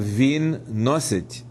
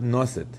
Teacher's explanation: the third-person marker, t, is always soft, as it is in standard Ukrainian, and not hard, as it is in Russian. So, for instance, in Surzhyk, under 12c1, we have vin nosit, with a soft T, not nosit.